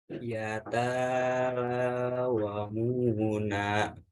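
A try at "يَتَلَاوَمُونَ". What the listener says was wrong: Ya, taknya dibaca pendek. Ulangi lagi.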